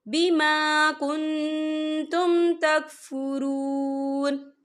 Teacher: أَكَفَرْتُمْ بَعْدَ إِيمَانِكُمْ فَذُوقُوا الْعَذَابَ بِمَا كُنْتُمْ تَكْفُرُونَ، یہ دیکھیں بیما کن، یہاں نون ساکن ہے، نون ساکن کے بعد جو ہے تا آ رہا ہے، اور تا جو ہے افا کا ورڈ ہے، تو ہم یہاں افا کریں گے، نون ساکن کی آواز کو ناک میں چھپائیں گے